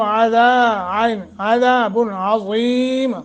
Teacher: عظیم عین اور ذا کو موٹا